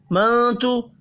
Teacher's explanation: نون ساکن کے بعد حروف اخفا میں سے ایک حرف تا ہے، اخفا حقیقی ہوگا